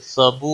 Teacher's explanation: वाउ मद्दा है, एक अलिफ के बराबर खींच कर पढ़ेंगे